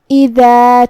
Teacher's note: کلمت اذا میں یہاں الف کے نیچے زیر ہے تو ہمیں حمزہ کو نیچے سے پڑھنا ہے. حمزہ کی ادائیگی حلق کے نیچے والے حصے سے ہے